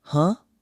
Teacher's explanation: You can't use a long word, that's too slow. You need a quick, neutral vowel, the kind your mouth makes when it's barely doing anything. You give it a rising tone so it reads as a question, and you keep it minimal.